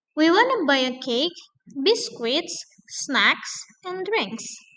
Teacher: for list itu rise, rise, and the last is falling.